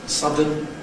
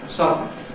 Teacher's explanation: a schwa [ə] and an [n] coalesce to make a syllabic [n̩], that’s a bit longer than an ordinary [n], so that you can tell it’s a separate syllable. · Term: syllabic consonant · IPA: [ˈsʌdn̩]